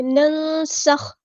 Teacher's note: سین کی سٹی ہم نے واضح کرنی ہے